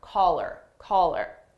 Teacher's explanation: we drop the H sound on her